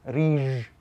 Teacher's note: So they would say riž with a ž instead of with a sh.